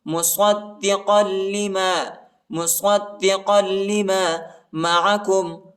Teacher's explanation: صاد کو دال کے ساتھ ملانا ہے، اور قاف کو جو ہے لام کے ساتھ ملانا ہے، اور سختی کے ساتھ شدت کے ساتھ پڑھنا ہے